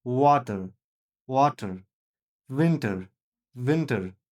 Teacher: W söylenirken dudaklarımız birbirine değiyor.